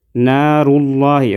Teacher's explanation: را کو ہم موٹا ادا کریں گے، لفظ اللہ کا لام بھی موٹا ہوگا